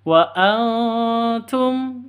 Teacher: cara bacanya ee samar disertai dengung siap-siap ke huruf tanya karena ini ikhfa Hakiki